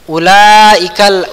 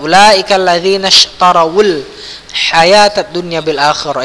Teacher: Ulaikal, ulanya panjang ya, mat wajib 6 harakat.